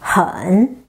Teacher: H is initial, N is nasal final with the third tone, a bouncing tone